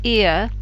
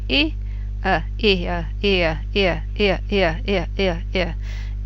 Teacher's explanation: you can probably also hear that the E takes longer, maybe 60-70% of the duration, and the is much shorter, 40-30% of the duration.